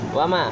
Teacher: Alasannya yaitu ada huruf alif di fathah, panjangnya adalah satu alif atau dua harokat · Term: mad tabi'i